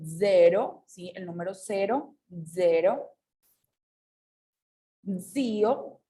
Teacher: Y bueno, por último tenemos la regla de la Z, que se va a pronunciar un poquito diferente si está al principio de nuestra palabra o si está en medio, ¿ok? Cuando se encuentra al principio va a tener como un cierto zumbido